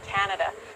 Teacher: there is a rise fall intonation when she said Canada. Ca is the rise intonation and nada is fall intonations.